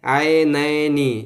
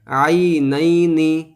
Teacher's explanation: بہت سے حضرات اکثر مجہول پڑھتے ہیں عینینی اس طرح، تو یہ غلط ہو جائے گا، معروف طریقے سے پڑھا جائے، عینینی اس طرح معروف انداز میں پڑھا جائے، مجہول طریقے سے پڑھنا یہ غلط ہو جاتا ہے